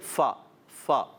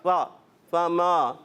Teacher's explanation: فما، بعض مرتبہ دیکھا گیا فما اور وما یہ بہت ملتے جلتے لفظ ہیں نا، اگر کسی نے فا کو صحیح ادا نہ کیا، یعنی فا جب ادا ہوتا ہے تو آواز اور سانس جاری ہوتی ہے، یعنی فا فا، اگر آپ نے ایسا نہ کیا اور صرف دانت لگا دیا اور کہا فا فما، تو کیا ہو جائے گا؟